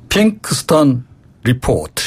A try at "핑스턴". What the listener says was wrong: 핑스턴. 예, 발음을 제대로 하셔야죠. 핑스턴. 예, 핑크스턴 이러면 안 되고요. 핑스턴.